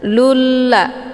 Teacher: Maka sudah jelas yang menjadi huruf syamsiyah di sini adalah la, bukan za. Cara bacanya, lamnya langsung dimasukkan ke dalam lam huruf syamsiyah. Lulla dengan cara ditekan. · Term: idgham syamsiyah